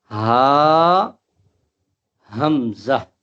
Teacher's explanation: آخری حصہ جو سینے کی طرف والا ہے اسے اقصائے حلق کہا جاتا ہے، یعنی وہ حصہ حلق کا جو سینے کی طرف والا ہے، وہاں سے ہم نے حمزہ اور ہا ادا کرنا ہے، دونوں حروف مستفیلہ میں سے۔